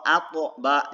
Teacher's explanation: Kemudian dia qalqalah, apabila dia disukunkan maka dia memantul.